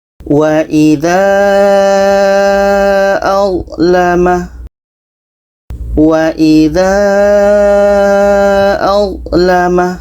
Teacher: madd bertemu hamza dalam dua kata. Panjangnya empat sampai lima harakat. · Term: mad jaiz munfasil